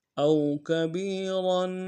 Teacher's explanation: را کے اوپر تنوین ہے، غنہ کریں گے، اور را کو موٹا ادا کریں گے